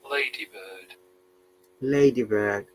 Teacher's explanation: because in British English we don't pronounce letter R